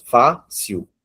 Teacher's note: Então, nós temos a sílaba tônica, a penúltima sílaba. Então, a classificação dessa palavra é paroxítono.